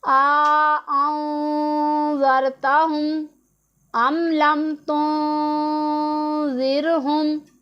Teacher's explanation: یہاں پر آپ دیکھیں کہ نون ساکن ہے، اس کے بعد حروف اخفا میں سے زال آ رہا ہے، تو یہاں پر ہم اخفا کریں گے